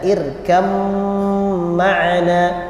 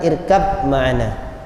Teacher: ba sukun itu jadi idgham masuk ke mim, dibaca irkam ma'ana, bukan irkab ma'ana, tapi dibaca irkam ma'ana wa la takum ma'adh dhalimin.